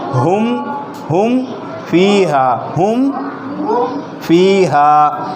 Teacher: ہم میں ہماری آواز ناک میں نہیں جانی چاہیے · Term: اظہار